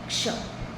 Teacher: क्ष का जो क्ष कैसे बनता है? क प्लस मूर्धन्य स। ठीक है, इन दोनों को मिलाकर ये बनता है क्ष। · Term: संयुक्त व्यंजन